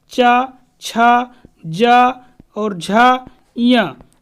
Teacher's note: चा वर्ग में जो भी हमारे वर्ड आते हैं, चा, छा, जा और झा, या, इनका उच्चारण स्थान तालु होता है।